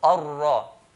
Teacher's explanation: when ra has a fatha, we make it heavy